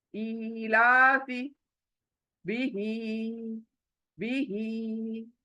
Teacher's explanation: ये जब खड़ी जेर देखो तो कितना खींचो, हमें एक अलिफ के बराबर खींच कर पढ़ना है।